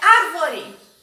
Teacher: Quando a gente fala árvore, o acento está no ar. Acento agudo, grampo da vovó.